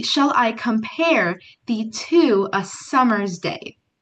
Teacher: An example from Shakespeare would be, "Shall I compare thee to a summer's day?" That's called iambic pentameter. 10 syllables, and every other beat is stressed.